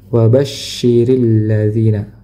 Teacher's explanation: Nah, di sini huruf syin bertasydid ya. Huruf syin bertasdid maka hendaknya ditahan dan ditekan dua harakat.